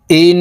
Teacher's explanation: ইন ওয়াজিব গুন্না হরকতের বামে নুনের উপরে তাসদিদ আছে এই কারণে এই হামজা তাশদি নুনের সাথে নাকের বাঁশি থেকে গুন্নাহ করে পড়তে হবে